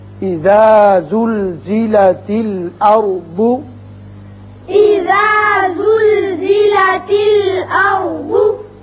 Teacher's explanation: یہ جو زا ہے اس میں سیٹی کی آواز ہے